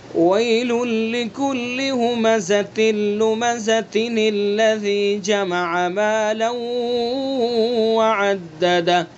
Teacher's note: اگر ہم وصل کر کے پڑھیں گے تو تا کے نیچے زیر پڑھ کے پھر نون پڑھیں گے، اور اگر ہم نے یہاں پر وقف کر دیا تو اب یہ نون ختم ہو جائے گا. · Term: نون قطنی